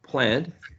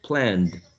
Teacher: because we have plan and is a voiced nasal sound, right? So for the past tense, you have to use a voiced sound, which is a d